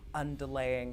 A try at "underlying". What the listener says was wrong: Underlying, not underlaying. I don't think that was your accent. I think you actually mispronounced their shit.